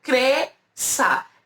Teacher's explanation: E a gente tem mais um aqui, ó, que é o SC cedilha, que é a mesma coisa. É como se eu tivesse só o som do S